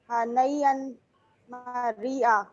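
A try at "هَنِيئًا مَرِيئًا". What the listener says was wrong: हनैया नहीं, हनीयम मरिया, नून के नीचे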